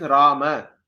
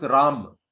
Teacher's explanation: the Hindi people, for them, the last akara is always dropped, or even the a sound at the end of every syllable they drop it.